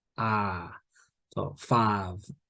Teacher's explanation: so the I I sound in words like five and like in mle Multicultural or modern London English it's much flatter so it's not I it's more like ah five like then